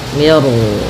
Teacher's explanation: di sini mi-nya tipis, ro-nya tebal. Nah, di sini namanya ro tafkhim.